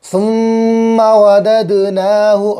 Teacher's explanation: ثا زبان کی نوک اور اوپر کے دانتوں کا کنارہ